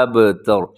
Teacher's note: اب با کو ہلانا ہے کیونکہ با حروف قلقلہ میں سے ہے، تا باریک ہے، را موٹا پڑا جائے گا، ابتر۔